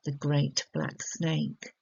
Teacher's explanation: the is unstressed and great is stressed, so this is an iam, but both black and snake are stressed syllables